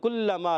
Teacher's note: کلما لام مشدد ذرا رک کر ادا کریں گے